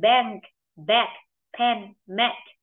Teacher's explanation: E bẹp e thương ta đọc nó dẹt hơn e nhưng e bẹt ta đọc miệng nó rộng hơn